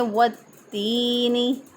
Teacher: یا ساکن سے پہلے والے حرف کے نیچے زیر، تو یا مدہ ہوتا ہے، ایک الف کے برابر لمبا کریں گے۔